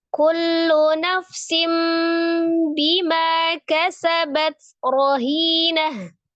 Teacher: Ketika harokatnya dhamma tanwin, ketika diwakafkan maka menjadi sukun, maka tak marbutoh ketika disukunkan menjadi bunyi huruf ha ya, dari rohinatun menjadi rohinah.